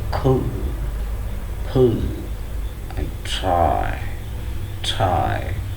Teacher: a strong puff of air will be released when we pronounce these three words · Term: aspirated